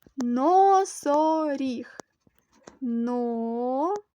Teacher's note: три складове слово наголос падає на останній склад